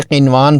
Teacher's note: یہاں ادغام کی بجائے اظہار کرتے ہوئے نون کو ظاہر کر کے قنوان پڑھیں گے۔